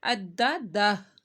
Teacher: دو زبر یعنی تنوین کے بعد وو آ رہا ہے، تو یہاں پہ ہم نے گنہ کرنا ہے، مالا وعددہ، عددہ۔ دال 2 دفعہ پڑھا جائے گا اور یہ جو ہا ہے یہ ساکن ہو جائے گا، اس کے اوپر جو الٹا پیش ہے لمبا نہیں کیا جائے گا، عددہ۔